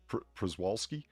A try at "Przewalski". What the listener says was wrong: Just Przewalski. Pronounce the Z.